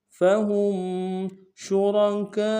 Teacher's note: شین تفشی میں واضح کریں گے اور را کو موٹا ادا کریں گے۔